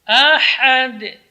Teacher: hamas keluar dari tengah-tengah tenggorokan huruf ha